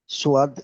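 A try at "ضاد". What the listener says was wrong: সদ নয়, দদ, দদ। সদের উপরে নক্ত হয় না, ঠিক আছে, ঠিক আছে, দদের উপরে নক্ত হয়, তাহলে এটা হলো দদ ইয়া। হুম, আর টান দেন, দদ যেহেতু তিন আলিফ পরিমাণ টান, সেই জন্য দদ ইয়া।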